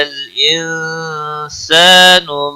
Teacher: انسان نون ساکن کے بعد حروف اکفا کا سین آیا ہے، اکفا حقیقی ہوگا، گنہ کے ساتھ پڑھیں گے۔